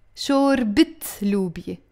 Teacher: the moment we pronounce the تاء مربوطة, the فتحة always becomes a كسرة.